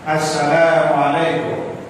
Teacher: Kalau menurut kaidah bahasa, kum nggak boleh panjang. Tidak ada tanda mat dalam kalimat atau kata kum, karena kum itu artinya adalah kamu.